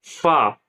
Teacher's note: फ ऊपर के दांतों के किनारे और निचले होठ के तर हिस्से से अदा होता है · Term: हुरूफ शफविया